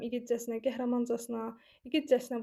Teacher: Casına vurğunu qəbul etmir və ikinci i-nin üzərində vurğu olmuş olur.